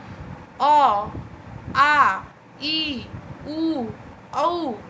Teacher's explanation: ये बोलते समय नाक में किसी प्रकार का कोई हलचल महसूस आपको नहीं होगा, कोई परिवर्तन कुछ नहीं महसूस होगा, केवल मुख आपका खुलेगा और मुख से वायु निकलेगा। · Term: निर्नुनासिक